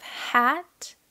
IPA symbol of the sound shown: æ